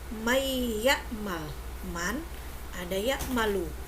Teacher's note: Nun sukun terpisah dengan huruf waw atau ya, maka yang berlaku hukum idgham bigunah, harus dibaca dengung.